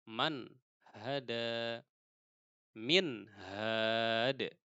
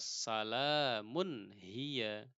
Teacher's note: izhar itu jelas halq tenggorokan berarti ee Bagaimana cara memahaminya yaitu huruf nun sukun dan tanwin pasti terdengar Jelas jika bertemu dengan huruf tenggorokan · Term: izhar halqi